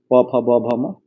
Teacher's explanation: प वर्ग, इसको ओष्ठ वर्ग में लेते हैं। प फ ब भ म, देख रहे होंगे होठ से उच्चारण होता है